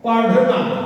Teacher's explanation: इस व्यंजन के उच्चारण में जीभ ऊपर उठकर और झटके से नीचे आती है। ये दोनों व्यंजन के उच्चारण में जीभ जो है ऊपर उठकर झटके से नीचे आती है और इसलिए इसको उच्छिष्ट व्यंजन भी कहते हैं।